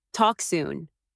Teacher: A soft rise on soon makes it sound hopeful.